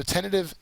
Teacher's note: It's a first syllable accented word.